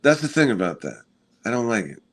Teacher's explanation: And also he has like he speaks out of his nose a lot